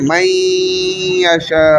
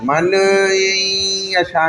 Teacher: नून मिल गया जाकर या के साथ क्योंकि यमु या नून मी वाव में से या आ गया। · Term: इदगाम